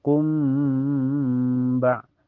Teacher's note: Cara bacanya mim sukunnya ya ee ditahan sampai terasa ke bunyi mimnya ditahan sampai terasa ke hidung ya. Kumba jadi hukumnya ik syafawi. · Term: ihfa syafawi